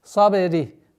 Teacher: Калькала звука ба не подчиняется твердому звуку сад.